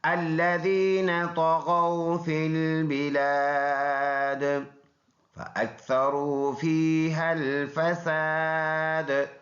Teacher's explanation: یہ الف مدہ ہے، یہاں پر رکیں گے تو یہ زیر سائلنٹ کریں گے، دال میں قلقلہ یعنی آواز مڑ کے آئے گی، تو ایسے بن جائے گا الذین طغوا فی البلاد فاکثروا فیہا الفساد۔